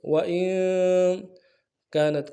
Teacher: کاف کے ساتھ الف مدہ ایک الف میں کھینچیں گے